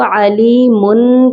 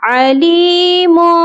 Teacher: جب بھی 2 زبر 2 زیر 2 پیش کے بعد حروف با آتا ہے تو اس تنوین کے ساؤنڈ کی جگہ میم کی آواز کو شامل کیا جاتا ہے